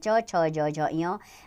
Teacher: तालु से च वर्ग के आते हैं।